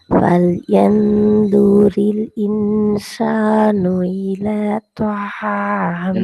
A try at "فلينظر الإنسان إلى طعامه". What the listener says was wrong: இந்த இலாதான் பிரச்சனை ஆகி இலால ஈட உச்சரிப்பு தெளிவா வருது இல்ல. இப்ப இன்சானுங்கிறது ஓதல்ல எப்படி ஈட உச்சரிப்பு தெளிவா வருதோ அதே போலதான் இலாட உச்சரிப்பும் ஓதல்ல வரணும்.